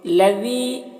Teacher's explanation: ذال کو باریک پڑھیں گے اور یا مدہ ہے تو 1 الف کے برابر کھینچیں گے